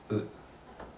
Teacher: 唇を丸めないで、そのままう、ね、う